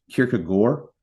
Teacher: the AARD is more like an or type sound